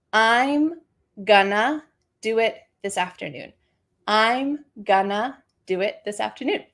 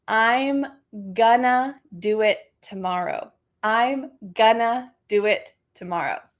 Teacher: I am becomes I'm and going to becomes gonna. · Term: reduction